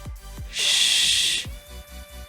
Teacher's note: the air passes out through the mouth rather than the nose, since the soft palate completely blocks the nasal cavity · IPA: /ʃ/